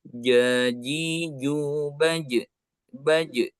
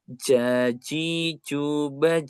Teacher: huruf ja dalam bahasa Arab itu adalah salah satu huruf jahar yang tidak ada z-nya tidak ada suara mengalirnya tidak ada desisnya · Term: huruf Jim